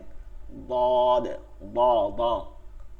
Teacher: জিব্বার আগাটা তালুর সাথে লাগে, তালুতে, দাঁতে না, তালুতে